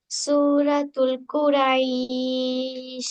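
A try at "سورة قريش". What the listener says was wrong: সূরাতুল নাই এখানে, সূরাতু। হ্যাঁ, এখানে এই যে দেখেন আলিফ লাম আছে এখানে, তারপরে কফের আগে কি আলিফ লাম আছে? নাই, তাহলে সূরাতুল বলা যাবে না, বলতে হবে সূরাতু। ঠিক আছে, সূরাতু কুরাইশ মাক্কিয়া অথবা কুরাইশিম মাক্কিয়া। শিম না বললেও কুরাইশ মাক্কিয়া বললেও হবে, তবে তুল বলা যাবে না, সূরাত।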